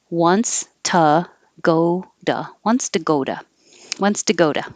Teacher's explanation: the u and two almost always changes to uh because it's not stressed · this t is between the o and go and its own o so it changes to a d and you change the u to an uh